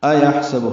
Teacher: حمزہ اقصى حلق سے بالجہر ادا کریں گے